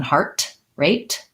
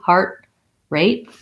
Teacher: stress on both words primary stress on heart heart rate and we have a tendency to use that uh stopped t on both of those